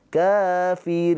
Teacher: nun sukun mempunyai sifat tawas ada aliran suara sedikit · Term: sifat tawasud